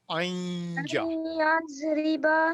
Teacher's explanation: نون کی آواز ختم نہیں کرنی نون اس کو یا میں ملانا ہے مکس کرنا ہے